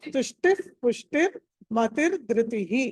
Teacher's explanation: తుష్టి తర్వాత విసర్గని హాఫ్ ఫ లాగా చదవాలి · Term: సగం విసర్గ